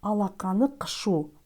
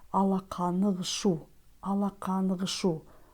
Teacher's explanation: В слове «кшу» звук «к» произносится как «г», потому что если после гласной или сонорной или звонкой согласной буквы следует «к» или «х», то эти буквы произносятся как звонкие «г» или «г». «Алақаны» оканчивается на гласный звук поэтому «кшу» произносится как «гшу». Не «алақаны кшу», а как «алақаны-гшу».